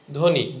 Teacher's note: লেখার সময় কিন্তু আমি ধয়ের সঙ্গে ব লিখেছি, কিন্তু এখানে আমি উচ্চারণ করতেছি কি, ধ্বনি, বকে উচ্চারণ করছি না